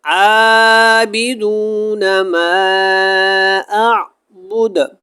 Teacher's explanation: عابدون ما اعبد، سب سے پہلے تو یہ سمجھ لیں کہ اعبدو کے اوپر یہاں پہ ہم نے وقف کر دیا، کیونکہ آگے آیت جو ہے وہ ختم ہو رہی ہے، تو دال کی پیش کو ختم کر دیا اور دال کے اوپر قلقلہ ہو گیا۔